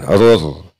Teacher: Rur hukumnya idgham bila gunnah, sebab ada tanwin bertemu dengan huruf ro. Maka cara membacanya tidak boleh ada suara dengung yang masuk rongga hidung, karena ini adalah idgham bila gunnah atau idgham yang tidak memakai gunnah.